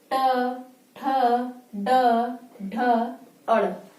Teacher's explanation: अब जो ट वर्ग है इसको बोलने पर यानी इसका जब उच्चारण करते हैं तो हमारी जो जीभ यानी जिह्वा है ये ऊपर जाके मुड़ जाती है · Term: मूर्धा वर्ग